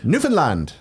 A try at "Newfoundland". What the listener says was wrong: You're saying Newfoundland. You're going. Da, da, da. You're putting it on the penultimate syllable, and you're going. Da, da, da. You're putting the access on the.